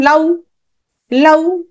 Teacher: আ, এটা পূর্ণ স্বরধ্বনি, আর উ, এটা হচ্ছে অর্ধ স্বরধ্বনি। এ দুটো মিলে কি হয়ে গেল? দ্বিস্বর ধ্বনি।